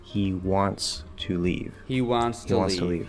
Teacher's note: we're going to go from that nasalized vowel into the S sound.